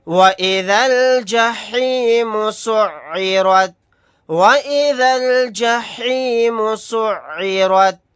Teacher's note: یہاں پر را کو موٹا یعنی پر پڑھیں گے کیونکہ را کے اوپر زبر ہے